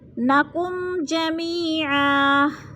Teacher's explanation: میم ساکن ہے اور جیم آگے ہے تو ادھر اظہار شفوی ہو رہا ہے، غنہ نہیں کریں گے بلکہ لفظ کو ظاہر کر کے پڑھیں گے